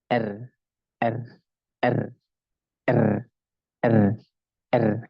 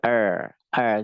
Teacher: yang bergetar itu ujungnya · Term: takrir